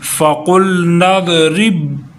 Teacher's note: قاف موٹا کریں گے، نون کو ضاد کے ساتھ ملائیں گے۔